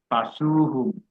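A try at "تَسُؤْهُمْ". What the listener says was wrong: Tasuk itu kan ngelipatin. Tasuk bukan tasu ya.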